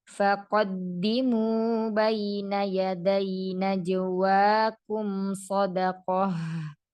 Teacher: Kemudian di tengahnya ada huruf 'qof', yaitu ' istila', jadi tebalkan huruf 'qof' dan jangan tebalkan huruf 'h'